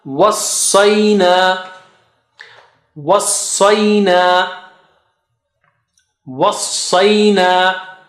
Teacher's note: wassa is very thick and high. Was, so first of all help sad because it has shadda sign.